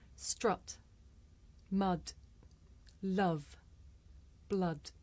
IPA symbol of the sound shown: ʌ